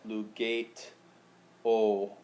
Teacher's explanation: And so in this situation where we have lugato, the E blends in with the O, and you get a lugate o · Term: elision